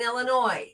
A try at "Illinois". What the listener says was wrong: It's Illinois. The S is silent.